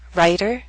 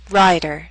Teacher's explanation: The words on the left have a shorter vowel sound in the first syllable. The words on the right have a longer vowel sound before that voiced D.